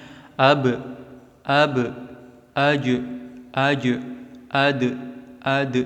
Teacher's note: Pada huruf-huruf ini, suara pantulannya ketika terjadi qalqalah adalah mendekati harokat fathah, akan tetapi tidak sempurna.